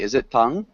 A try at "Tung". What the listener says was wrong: Not the oo sound.